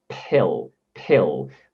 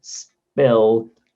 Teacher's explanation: in the word pill we are adding a bit of air to that p sound